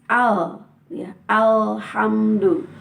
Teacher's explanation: ujung lidah berada di gusi atas